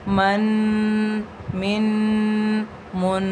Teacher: ہم نے غنہ بھی کرا، اس کو تھوڑا سا لمبا کر کے بھی پڑھا اور اس کو ناک میں بھی آواز لے کے گئے